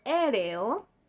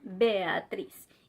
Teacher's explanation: Par exemple, dans le mot aéreo et dans le prénom Béatrice. Il faut le prononcer séparément parce que ce sont des voyelles fortes.